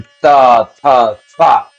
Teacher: ये सा अगर हम बोलते हैं तो हमारी जीभ दांत से टकरानी चाहिए